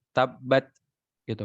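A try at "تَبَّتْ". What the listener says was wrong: ya cukup segitu.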